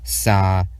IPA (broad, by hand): s